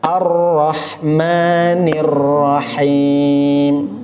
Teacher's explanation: Ar-Rahmanir-Rahim sama dengan bismillah. Huruf ro-nya ada tasydid. Jadi harus ditahan sebentar. · Saya sengaja ro-nya agak ditebalkan. Lebih dijelaskan.